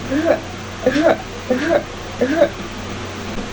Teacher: Hambatan tidak terlalu kuat dan glotis dalam keadaan menyempit sehingga bunyi dialirkan dengan menggetarkan pita suara.